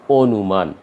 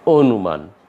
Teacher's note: যেহেতু অ এর পর হস্য পেয়ে গেছি, এই কারণে এ অ এর উচ্চারণ অ এর মতো হবে না, এটা হয়ে যাবে ও এর মতো।